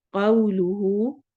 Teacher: कौ में वाउलीन हो रही है, होंठ गोल होंगे। कौलुहु फिल हया, हा हरूफ हलकी में से उसका साउंड लाने की कोशिश करनी है।